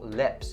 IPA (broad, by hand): lɪps